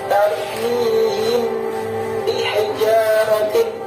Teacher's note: Ini adalah bacaan ikhfa syafawi karena ada mim mati bertemu dengan huruf ba, sesuai dengan namanya, yaitu ikhfa syafawi, yang artinya adalah menyamarkan bibir. Jadi pertemuan antara huruf mim dan huruf ba harus disamarkan dengan mempertemukan bibir atas dan bibir bawah, sehingga terdengar seperti huruf mim sembari mendengung